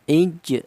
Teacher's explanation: Qalqalah itu artinya ada suara pantulan. Jadi cara bacanya huruf jim ini dipantulkan. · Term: qalqalah sughro, qalqalah sughra